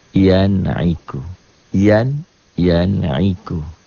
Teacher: dibacanya jelas tanpa ditahan tanpa dengung tanpa dihentak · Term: izhar